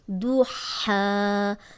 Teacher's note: 2 حرکات لمبا کریں کیونکہ کھڑی زبر آ گئی ہے